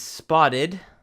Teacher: So it loses its T sound in American English and becomes a very quick R, which is actually called a flap. That's what that symbol is.